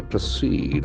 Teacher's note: Accent falls on the second syllable.